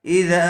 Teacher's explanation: زبر والے حرف کے بعد الف آیا ہوا ہے، اس لیے زال کو تھوڑا کھینچ کر پڑھیں گے۔